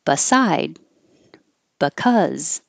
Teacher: the b is not stressed so it can change to ba or bit but it's going to be very short